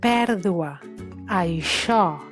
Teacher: Pèrdua, això, sonen obertes, més pròximes a la A